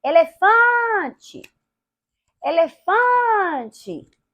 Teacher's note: o t e teve o fã a sílaba Fan Ou seja a sílaba Fan é a segunda sílaba forte do final da palavra para o início dela